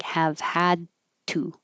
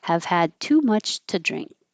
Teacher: You won't release this D, so it'll just sound like have had to.